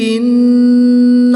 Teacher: نون مشدد میں غنہ کر کے پڑھیں گے۔